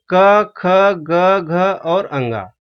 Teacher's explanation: ये क वर्ग में आते हैं। इनका उच्चारण स्थान कंठ है।